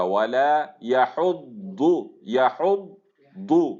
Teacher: لام کو تفخیم نہیں اس کے اندر لے کے آئیں گے، باریک ہی رہے گا